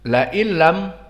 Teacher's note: La illam maka lam muraqqaqah dan hamzah muraqqaqah, lain nun kadalik muraqqaqah, dan di sini nun sakinah bertemu dengan lam, lain lam, maka di sini ada idgham hakiki